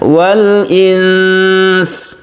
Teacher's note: kalau kita berhenti wal-ins ini kita panjangkan sebagai ikhfa kemudian kita sukun sin-nya